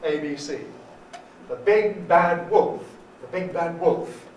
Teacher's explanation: you can suppress the intonation on the middle one